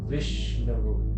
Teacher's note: ఎందుకంటే ఇప్పుడు మీ ఉదాహరణకి విష్ణువు, ఆ విష్ ఎక్కువసేపు పలుకుతాం కాబట్టి వి గురువు అవుతుంది